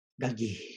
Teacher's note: it's this really long uh breathy vowel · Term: long breathy vowel